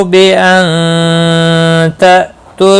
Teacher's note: نون ساکن کے بعد حروف اخفا کا تا آیا، اخفا حقیقی ہوگا